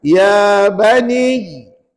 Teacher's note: sebut ya bani tu kita beratkan ya dan tanpa bacaan Mad makna baca pendek